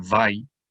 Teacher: the Shava is silent. It's simply the end of the syllable, end of that part of the word.